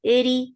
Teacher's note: The sound is short. Eri, ra is light with little takrar in it